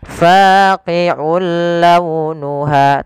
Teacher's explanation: ada hukum tajwid berupa memasukkan suara tanwinnya kepada huruf lam yang kita kenal dengan idgham. Nah, tapi idgham di sini tidak boleh disertai dengan gunnah, maka kita namakan dengan idgham bila gunnah.